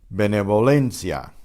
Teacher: The first letter, the B, is pronounced the way we normally do with the puff of air. But the V is between two vowels, so it's benevolencia.